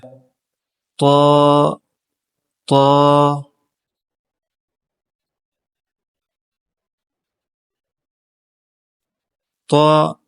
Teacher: زبان کی نوک اور ثنایا علیا کی جڑیں، اس سے طا ادا ہوتا ہے